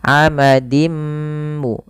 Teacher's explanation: Cara membacanya ganti hurufnya atau ganti harakatnya masuk kepada huruf mim dan diganti bunyi menjadi bunyi mim. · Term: idgham bi gunnah